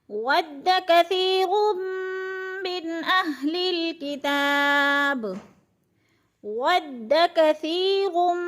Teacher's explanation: کثی کی سا جو ہے نرم کر کے پڑھیں گے، نرم حروف میں سے ہے، بالکل نرم کر کے، یعنی سیٹی کی آواز نہ آئے · ود کثیر، روم پہ جو ہے ادغام ہو رہا ہے، 2 پیش تنوین کے بعد میم مشدد آ گئی ہے تو را کو میم کے ساتھ ملا کر ادغام کریں گے، یعنی ادغام کا معنی ہوتا ہے ایک لفظ کو دوسرے لفظ کے ساتھ ملا کر پڑھنا۔